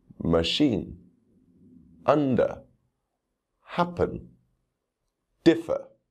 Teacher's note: first we'll look at the uh sound this sound is always unstressed